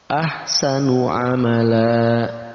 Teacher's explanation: Tanwin kita ganti menjadi alif, maka kita panjangkan 2 harakat. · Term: mad badal